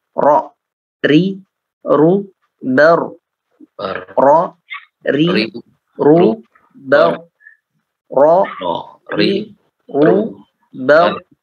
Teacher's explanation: Yang betul adalah getaran, tetap ada getaran namun tidak mubalaghah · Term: takrir